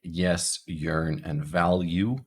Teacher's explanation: our voiced palal Glide y so in yes yearn and value the Y sound is kind of hidden between the L and the U